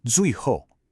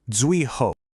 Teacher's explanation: here we have two strong, sharp, falling fourth tones.